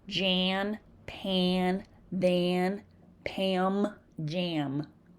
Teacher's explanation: Because these sounds are produced with the help of the nose, vowel sounds preceding the or are often distorted. This is called nasalization because the vowel is pushed through the nose.